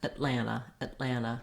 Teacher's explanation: that first vowel is very reduced very short